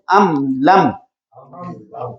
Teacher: ام لم، میم فوراً ظاہر ہو رہی ہے، ام لم، غنہ نہیں ہو رہا، فوراً ادا کر کے اگلا حرف لفظ پڑھ رہے ہیں